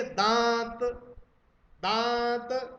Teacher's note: जब चंद्र बिंदु बोलोगे आप, तो वायु नाक और मुख दोनों से निकलेगी अनुनासिक बोलते समय।